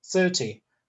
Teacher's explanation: there is no n at the end and uh the stress is on the first syllable